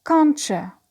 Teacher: when the first word ends with t and the second word starts with u, they influence each other and they come up with a new sound, which is the sound ch. Example, can't you, it becomes can'tcha. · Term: palatalization